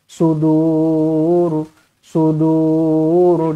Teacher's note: Dibaca dur panjang, dua atau empat atau enam harukat.